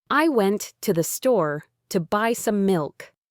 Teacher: The words went, store, and milk are stressed. The other words, I, to, the, to, some, are quickly, lightly pronounced. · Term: Sentence stress